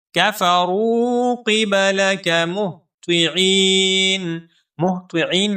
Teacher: آگے دیکھیں، کفروا قبلک مہطعین، مہطعین میں جو طا ہے اس طا کو ہم موٹا کر کے پڑھیں گے اور طا کے بعد ہے عین، اس عین کو ہم 1 الف کے برابر لمبا کریں گے کیونکہ یہاں پر یا مدہ ہے